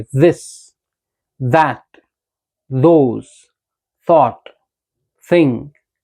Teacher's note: सो first when we से दिस, what we do, we control the flow of air. तो हमारा air flow होता है वो कहां से होता है, टंग के दोनों साइड से